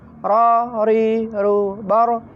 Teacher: Ra itu getarannya hanya minimal 2 atau 3. Paling banyak 3.